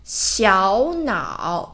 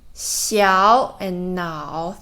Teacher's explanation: This part, 小脑 And here, there's two third tone and should pronounce the first one into second tone.